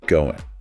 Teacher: that final G sound in going is often dropped. It becomes more of a nasal end sound.